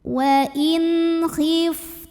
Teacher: nun sukun yang menghadapi huruf halqi atau huruf tenggorokan yaitu Kho maka nun sukun kita bunyikan dengan jelas bunyi n-nya jelas tidak perlu ditahan · Salah satu sifat dari Fa Ini adalah mengeluarkan angin atau hams dari segi udara wa inhiftum Tum berikutnya ada hukum izhar syafawi karena ada mim · Wa in khiftum, berikutnya ada hukum izhar syafawi karena ada mim sukun yang menghadapi huruf yang bukan mim, bukan ba, selain mim dan ba, yaitu shin. Maka mim sukun ini kita bunyikan dengan jelas bunyi m, tidak ditahan.